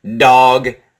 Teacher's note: You can feel the vibration here, the shaking, the vibration in your throat for the D.